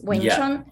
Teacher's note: So it goes low and high. · It's also 6 tone, right? And then Chun is first tone, right?